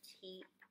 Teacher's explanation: Zee now we have th and this is the quiet th we bite our tongue and keep our voice off